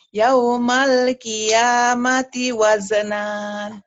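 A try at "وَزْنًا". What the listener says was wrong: Ya dihentikan dibaca satu. Wazna. Ya mad iwa itu ini dua patah dibaca satu jika dihentikan dan panjang seperti matobi. Yaumal qiyamati wazna.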